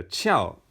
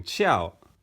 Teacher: I think that sounds like fourth tone because it's falling